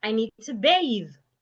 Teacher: put your tongue in between your teeth and you make vibration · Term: voiced th